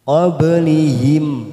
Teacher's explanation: Huruf ba sukun warna biru, namanya qalqalah sugro, kita pantulkan